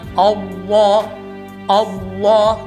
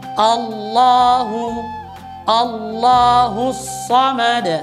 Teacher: A-nya tipis dan lamnya saja yang tebal.